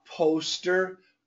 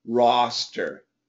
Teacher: These are both O for those, but roster is actually an AW. So poster and roster are quite different, although they look the same.